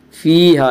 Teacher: یا مدہ کو ایک الف کے برابر کھینچ کر پڑھیں گے